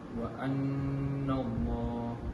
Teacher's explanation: terdapat huruf nun yang berbaris sabdu, iaitu hukum wajibal gunnah, maka ia perlu didengung 2 harakat